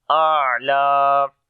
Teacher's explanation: Ain we read from the middle of the throat, and also we make tawassut quality on the ain, and lam we long due to standing fatha.